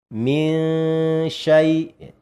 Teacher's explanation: Jadi antara dengung dengan samar adalah seimbang seperti itu ya. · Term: ausat